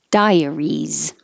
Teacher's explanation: Your tongue goes up very high, and then you're all ready to come down, so it'll make a Y.